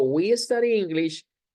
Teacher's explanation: we study English, el énfasis de la oración está en el sujeto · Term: intonation